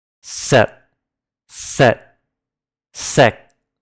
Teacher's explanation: Notice how there's not a hint of aspiration in the final consonants. I don't say sep.